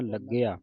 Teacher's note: ਲਗਿਆ ਤੇ ਸੰਗਤ ਜੀ ਅਧਿਕ ਲਾ ਕੇ ਉਚਾਰਨ ਕਰਨਾ ਕਸ ਕੇ ਬੋਲਣਾ